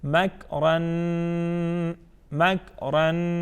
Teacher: ہم ناک میں ایک الف کے برابر آواز کو ٹھہرا کے پڑھیں گے، ٹھیک ہے. مگ اورن مگ اورن. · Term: غنہ